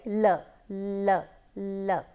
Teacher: So, when you are saying l, you can easily understand that the tip of the tongue is coming to the upper portion of our mouth, but then the sides are open for air to come out. So, air can easily come out. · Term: laterals